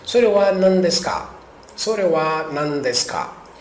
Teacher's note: Essa partícula K indica que é uma pergunta e geralmente a entonação passa a ser ascendente, né? Para cima.